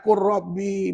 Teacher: masukkan huruf lam ke dalam huruf ra dan dibaca tanpa dengung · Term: Idam mutaqaribain